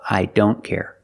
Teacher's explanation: with don't, the T is between consonants, so you don't hear it.